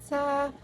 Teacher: Sa, konsonan geseran, apikodental, tak bersuara. Sa, konsonan paduan, apikopalatal, tak bersuara, non-aspirasi. Ca, konsonan paduan, apikopalatal, tak bersuara, beraspirasi.